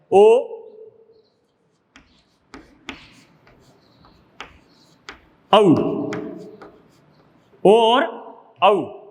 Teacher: ओ और औ ये दोनों कंठ और ओष्ठ से बोले जाने वाले वर्ण हैं। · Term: कंठोष्ठ